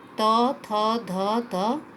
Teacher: जिन वर्णों के उच्चारण में जीभ जो है दांतों के स्पर्श करती है वो दंत्य वर्ण कहलाते हैं